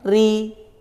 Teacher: ro dibaca tarkik karena ro berharakat kasrah beda dengan ro yang berharakat fathah atau dah dibaca tafkhim ha